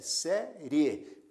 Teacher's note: Observe que a letra e se destaca portanto a letra e é vogal e a letra i se destaca menos né tem menos intensidade portanto a letra i é semivogal quando nós partimos da semivogal